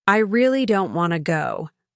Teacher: Putting so much stress on the word really.